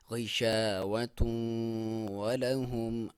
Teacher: یہاں پہ تنوین ہے اور واؤ میں اس کا ادغام ہے اور غنہ کے ساتھ ہے. یہاں پہ ایک الف کے برابر آپ ناک میں سے آواز نکالیں گے